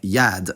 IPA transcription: jaːd